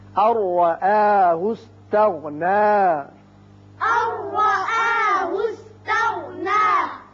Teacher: الرآه استغنى. نون ساکن کے بعد را ہے، ادغام بغیر غنہ ہوگا